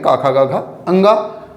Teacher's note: क वर्ग के वर्ण, हा और विसर्ग। इन सभी वर्णों का उच्चारण कंठ से होता है।